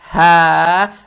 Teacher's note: Далее стоит буква ха. Она мягкая на выдохе произносится. Фатху над буквой ха тянем в 2 счета за счет подсказки прямой палочки.